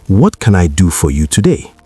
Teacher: Now, notice the music of that sentence. The intonation drops at the end because it starts with what.